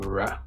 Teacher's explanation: the tongue tip approaches the alveolar ridge and air flows down the middle of the tongue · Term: central approximants